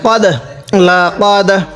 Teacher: যেহেতু এখানে কফ আসছে এজন্য একটু ধাক্কা দিয়ে পড়ব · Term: কলকলা